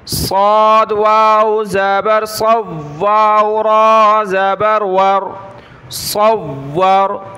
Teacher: صاد اور را کو ہم نے موٹا کرنا ہے، دونوں کلرفل ہیں، اس کی جگہ ہم نے سین کو نہیں پڑھنا بلکہ صاد کو پڑھنا ہے۔